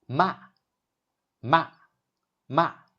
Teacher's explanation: The pitch starts high and drops sharply like a command in English. It's similar to saying stop or no. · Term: fourth tone